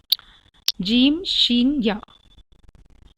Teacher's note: comes out from the middle of the tongue and middle of the palate। तो ज़बान की दरमियानी वाले हिस्से से निकलता है ये, तो मिडिल ऑफ द टंग।